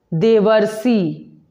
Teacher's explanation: जब अ के साथ री का मेल होता है तो वहाँ अर बन जाता है, वहाँ अर की ध्वनि उत्पन्न होती है।